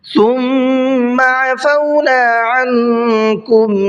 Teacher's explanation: ثم کے میم میں بھی غنہ کریں گے